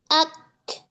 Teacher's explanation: ketika sukun pada kaf di sini syiddah dulu baru hams